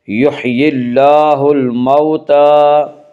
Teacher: کھڑا زبر قائم مقام ہے الف کے، اس لیے کھڑا زبر کو ایک الف کے برابر کھینچ کر پڑھیں گی · لین وہ واو جو ساکن ہو اس سے پہلے زبر ہو، واو لین کو نرم آواز کے ساتھ جلدی پڑھیں گی